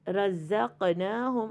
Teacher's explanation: اور اس کی ادائیگی میں تھوڑی سی بز کا ساؤنڈ ہوتا ہے زا میں